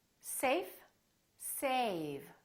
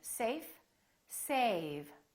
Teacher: Notice how A was longer with the V than with the F.